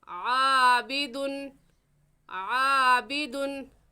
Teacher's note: खींच कर नहीं पढ़ेंगे, गुन्ना नहीं करेंगे, इसलिए आबिदुन पर गुन्ना नहीं करेंगे और ऐसे पढ़ेंगे आबिदुन, आबिदुन।